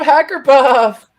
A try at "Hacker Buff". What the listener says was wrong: Hacker Buff, not Puff. Buff, B-U-F-F.